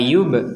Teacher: Di sini ada ba sukun kita membacanya dipantulkan dipantulkan maka tidak boleh kita membacanya la Yub la yubsirun la yubsirun